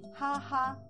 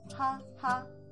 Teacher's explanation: the accurate way to pronounce the words that you see on the screen is ha ha, first tone